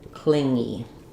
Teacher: We think it should be an N and a G sound. But really it's just one sound · We don't have, I think the problem with this one is that we see 2 letters, so we think we should have 2 sounds. We think that should be an n and a g sound, but really it's just one sound, the ng sound. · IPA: /ŋ/